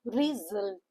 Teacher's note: It's two syllable word. The stress is on the second syllable